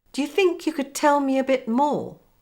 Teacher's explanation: you could notice the two words do you they become also the whole sentence is on the same level of intonation except for the words think and more